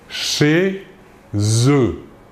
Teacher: ici la préposition chez termine par un Z la le mot qui suit commence par une voyelle un E nous réalisons donc la liaison